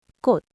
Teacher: in the final consonant position, 치읓, a ch sound, simplifies to 디귿, a d sound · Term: representative sounds